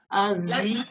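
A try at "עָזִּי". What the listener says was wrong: Attention, on a dit qu'il y a une exception, c'est écrit A, mais on doit prononcer Ozi,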